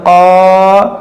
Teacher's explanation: یہ الف سے پہلے قاف حروف مستعلیہ ہے تو اس الف کو موٹا کریں گے